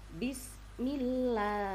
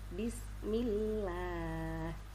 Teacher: didahului oleh harakat kasrah yang terdapat pada huruf mim maka membacanya agak ringan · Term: tipis